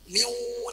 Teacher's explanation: langsung otomatis tanwin bentuk wawu, bibirnya langsung membentuk wawu ya. Miu, tidak pernah membaca min ya, pasti miu.